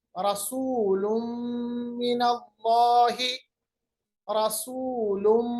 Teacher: दो पेश को हमने मीम के साथ मिलाया क्योंकि दो पेश के बाद मीम आ गया या तनवीन के बाद हमारे पास मीम आ गया, मिनल्लाहि, इदगाम बगुन्ना।